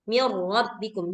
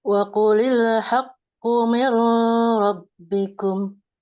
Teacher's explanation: Ini idgham bila gunnah masuk dengan tidak berdengung. Jadi nggak boleh dengung.